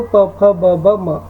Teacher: ಪ ವರ್ಗದ ಅಕ್ಷರಗಳು ಓಷ್ಠ ಅಕ್ಷರಗಳಾಗಿದ್ದಾವ